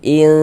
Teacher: Dibaca samar kemudian juga dia didengungkan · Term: ikhfa hakiki